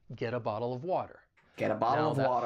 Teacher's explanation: that final T in get, because it comes between two vowel sounds, I am going to pronounce it as, you guessed it, a flap T. And then I can link that soft D sound with the article and it's going to sound like get a bottle of water.